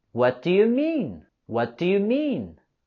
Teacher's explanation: And we're going to have a falling intonation with this question.